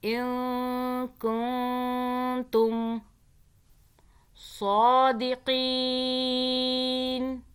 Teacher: نون کو آپ نے زبان تالو سے ٹچ نہیں کرنی اخفاء کے قاعدے میں، ٹھیک ہے؟ اگر ٹچ ہو جائے گی تو پھر نون ادا ہو جائے گا.